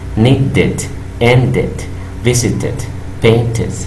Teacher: cuando aumentamos la terminación ED, el ED va a sonar como it